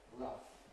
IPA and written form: rʌf (rough)